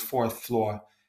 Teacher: They didn't pronounce the R.